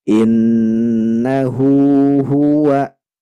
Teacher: Hunya panjang Karena dia ada damah terbalik dua harakat saja